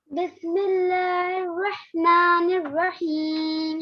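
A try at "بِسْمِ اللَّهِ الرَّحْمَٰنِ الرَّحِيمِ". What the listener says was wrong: रह, रह मोटा करके रहमानिर्रहीम। जी इसको साकिन क्यों किया?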